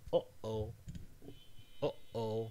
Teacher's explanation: So, for example, this one we call glottal stop, which is the little pause between uh-oh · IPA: [ʌʔoʊ]